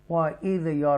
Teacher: یہ را جو ہے تفخیم کے ساتھ پڑھا جائے گا کیونکہ اس سے پہلے زبر ہے، وَإِذْ یَر کیونکہ را ساکنہ ہے اور اس سے پہلے زبر ہے، وَإِذْ يَرْفَعُ إِبْرَاهِيمُ الْقَوَاعِدَ مِنَ الْبَيْتِ وَإِسْمَاعِيلُ رَبَّنَا تَقَبَّلْ مِنَّا إِنَّكَ أَنْتَ السَّمِيعُ الْعَلِيمُ۔